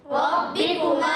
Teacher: را با مشدد ذرا رک کر ادا کرنا ہے. با کے نیچے زیر، کاف پر پیش، را پر زبر، حرکات کو نہیں کھینچیں گے. · کاف کا مخرج زبان کی جڑ تالو کا سخت حصہ، یہ کاف کا مخرج ہے. کاف پر پیش آنے کی وجہ سے ہونٹ گول ہوں گے